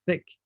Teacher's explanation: Another example could be the sounds here, from thick. Obviously, there is air coming out, but there is no vibration. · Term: unvoiced